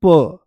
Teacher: तो जैसे ही हम बोलते हैं प तो प बोलती आराम से कम प्राणवायु ज्यादा जोर नहीं लगाना पड़ा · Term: अल्पप्राण